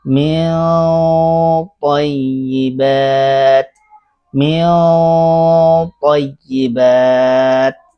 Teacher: huruf setelah ee nun sukun atau tanwin itu tebal maka dibaca tebal ikhfanya.